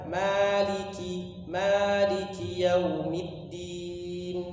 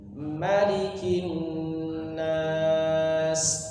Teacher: Nah, jadi dari riwayat Imam Hafs an Asim itu seperti itu. Jadi di surah Al-Fatihah kita baca panjang Maliki yaumiddin. Tapi di surah An-Nas ma-nya kita baca pendek.